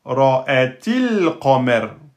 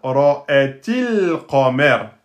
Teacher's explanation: Donc, el qamer devient ra'atil qamer. Elle disparaît, la hamza, quand elle est précédée d'un mot ou d'une lettre. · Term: hamza instable